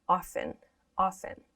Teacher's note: when we pronounce this, at least in American English, we don't pronounce this T. We don't say often, often.